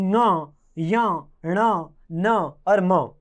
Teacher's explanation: एक उच्चारण स्थान है नासिका। जिन वर्णों के उच्चारण करते समय नाक से भी आवाज निकलती है उन्हें नासिका वर्ण कहा जाता है। और ये वर्ण 5 हैं। · ये मुख और नाक दोनों से बोले जाते हैं, इसलिए इन्हें नासिका वर्ण कहते हैं